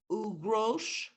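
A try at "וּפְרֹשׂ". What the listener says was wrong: This is a sin, not a shin. Ufros.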